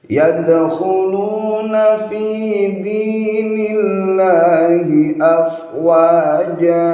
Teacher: Panjangnya untuk huruf jimnya ialah 1 alif atau 2 harokat. Hukum bacaannya ialah mad iwad.